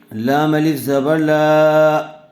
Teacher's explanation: زبر والے حرف کے بعد الف مدہ آیا ہوا ہے، لام کو تھوڑا کھینچ کر پڑھیں گے